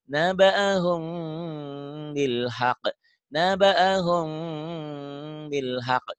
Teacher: Naba'ahum gitu, ikhfa ya. Bunyi M tapi bindeng. Naba'ahum ditahan. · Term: ikhfa syafawi